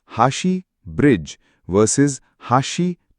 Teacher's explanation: hashi bridge versus hashi chopsticks differ in pitch, not stress. Double consonants represented by a small t. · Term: pitch accent